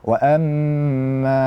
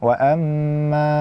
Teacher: Jadi tidak boleh kita membaca wa amma dalam hidung. Namun mim yang pertama memang dalam hidung, kemudian ketika dia panjang, dia suaranya lewat mulut. Wa amma, bukan wa amma.